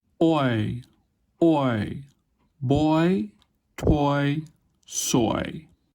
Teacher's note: begins in the middle back of the mouth a little above /ɔ/, and then fronts and rises toward /ɪ/ · There is also an obvious lip shape change in this one. It begins with open, rounded lips and ends with unrounded lips. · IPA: oɪ, /oɪ/